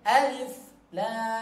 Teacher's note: Nah, huruf lamnya, la-nya panjang 6 harokat.